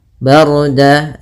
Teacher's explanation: di sini rnya tebal yaitu ro takhim karena sebelum ro sukun ada huruf berharakat fathah · ra-nya tebal yaitu ra takhim karena sebelum ra sukun ada huruf berharakat fathah. Kemudian dawu ada fathatain bertemu dengan waw, maka apabila ada fathatain bertemu dengan waw hukumnya idgham bi gunnah atau ma'al gunnah, yaitu kita masukkan dannya ke waw.